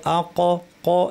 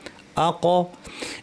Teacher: বাউন্সের মতো আওয়াজটা, এটা হচ্ছে কলকলা, আ ক। এবং সেই সাথে কফ উচ্চারণের সময় বাতাস বন্ধ থাকে।